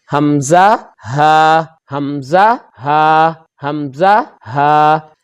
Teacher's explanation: یہ 2 حروف حلق کے نچلے حصے سے ادا ہوتے ہیں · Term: اقصی حلق